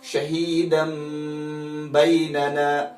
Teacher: تنوین اور نون ساکن کی آواز کو تبدیل کرنا ہے میم کے بدلے میں · ہم نے تنوین کو نہیں پڑھنا ہے، ہم نے میم کو پڑھنا ہے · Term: اقلاب